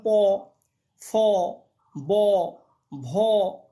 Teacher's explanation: অষ্ঠ ও অধর উপরের ঠোঁট এবং নিচের ঠোঁট এই দুটো পরস্পর্শকে স্পর্শ করছে এইগুলো হচ্ছে অষ্ঠ ব্যঞ্জন যেমন প ব দেখ দেখো এগুলো হচ্ছে